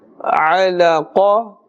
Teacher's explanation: Qaf is part of huruf musta'aliyah, always pronounced with a thicker tone.